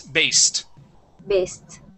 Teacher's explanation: use an unvoiced S